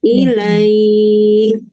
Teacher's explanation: Huruf huruf lin ya dibaca pendek awalnya tetapi karena bacaan berhenti sampai diilai huruf terakhirnya disukunkan sehingga menjadi panjang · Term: madlin